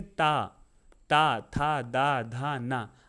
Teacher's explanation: ये ता होता है ये सीधे दांत पे टच होता है, इसलिए दंत बोलते हैं।